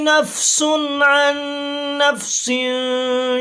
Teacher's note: پہلے نفسن پر تنوین جو ہے اس پہ غنہ نہیں ہوگا